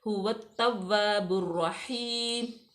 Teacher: انہو هو التواب الرحیم، هو الف لام جو ہے وہ سائلنٹ ہے، واو کو ڈائریکٹ تا میں ملائیں گے، تا مشدد ہے، واو بھی مشدد ہے، تو اس کو ہم بالکل سختی سے پڑھیں گے۔